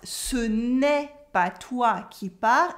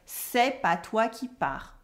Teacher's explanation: ce n'est pas toi qui pars, it's not you the one who is leaving, becomes c'est pas toi qui pars, without the ne